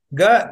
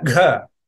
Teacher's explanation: they are pronounced with maximum aspiration along with the chanting of that word, with maximum energy, maximum prana. That is why it is called mahaprana. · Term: mahapranas